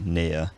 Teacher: plenty of people, including me, still pronounce the near vowel as a diphthong